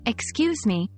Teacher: excuse me, with a rising intonation is like saying, could you please say that again?